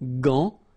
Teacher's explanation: you've got this an, so it's nasal, gant, and then final T is not pronounced here